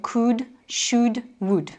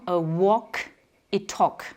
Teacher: Donc là, on ne va pas dire could, should, would, on va dire donc could, should, would. Le L est muet et on retrouve ce L muet également dans walk et talk